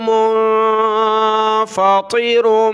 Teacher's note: تو آیت نمبر 18 سے شروع کرتے ہیں، السماء منفطر به، الف کو سین کے ساتھ ملایا، السماء منفطر، نون ساکن کلرفل ہے، ناک میں آواز پیدا کی، طا کو موٹا کیا اور را کو، منفطر به، یہ دو پیش ہے، اس کو کہتے ہیں تنوین۔